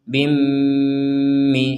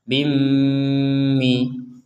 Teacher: harus ada dengung, kurang lebih 2 harokat